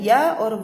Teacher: इनके उच्चारण में जीभ, तालु तथा होंठ का स्पर्श बहुत कम होता है, इसीलिए इन्हें अर्धस्वर कहा जाता है।